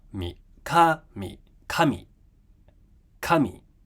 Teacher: So we start high, ka, come down lower.